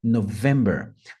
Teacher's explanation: notem que tem uma ênfase no vem